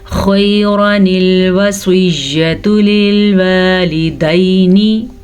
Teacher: خا کو پر پڑھیں گے, پھر سے خا ہمیشہ ہی پر پڑھی جاتی ہے. را کو پر پڑھیں گے, را کے اوپر زبر کی وجہ سے